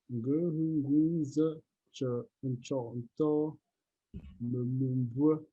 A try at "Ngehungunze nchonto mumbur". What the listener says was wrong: Non, les tons sont bas.